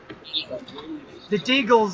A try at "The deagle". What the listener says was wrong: It sounds like you're asking a question when you say deagle.